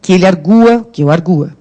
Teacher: é o U que é forte